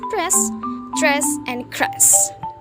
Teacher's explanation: r sound is found at the beginning of the syllable if it is preceded by p, t, k. It is then voiceless and fricative. This pronunciation is found in words such as press, dress, and cress.